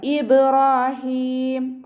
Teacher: ബ കൽക്കല ലെറ്റർ ആയതുകൊണ്ട് ഫുൾ സുക്കൂന് കൊടുക്കുക കേട്ടോ. ഇബ്രാഹീം. റോ ഫതഹയാണ്, ഉയർത്തിയിട്ട് ഉച്ചരിക്കുക.